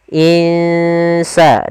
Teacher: cara membacanya kita samarkan nunnya ke huruf Sin · Kita samarkan nunnya ke huruf sin. Insa, dan itu ikhfanya ikhfa tipis.